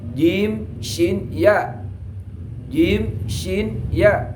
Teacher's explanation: Sekarang yang wasat lisan dari bangsa lisan itu adalah jim, shin, ya.